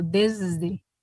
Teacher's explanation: es fricativa alveolar sonora, es una S sonora. Ya sabemos que la S en su sonido ideal es sorda, pero también puede sonorizarse.